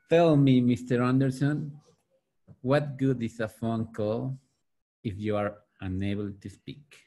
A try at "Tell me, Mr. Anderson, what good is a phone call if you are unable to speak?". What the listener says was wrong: Very good. Okay, very good, both of you.